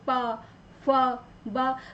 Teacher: हमारे होठों का टच स्पर्श होता है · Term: पवर्ग